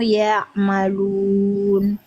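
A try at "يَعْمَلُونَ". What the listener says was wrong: Jangan di stop baru ma. Jangan di stop suaranya. Ya'malun. Tangain ke mimnya coba. Fathahnya dijaga ya bunda, jangan mereng-mereng.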